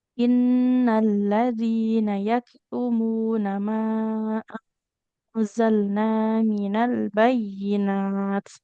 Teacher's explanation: kalau berhenti di sini nggak boleh minal bayyinah, tapi minal bayyinat. Nggak jadi huruf H.